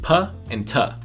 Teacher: stops where air flow is stopped completely from coming out of the mouth for just a moment · if you pay close attention, you can see that the airflow is stopped completely just for a moment and then released again